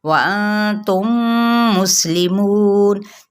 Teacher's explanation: نون پہ اخفا اور میم ساکن کے آگے میم متحرک ہے، تو یہاں پہ ادغام شفوی کا قاعدہ ہو رہا ہے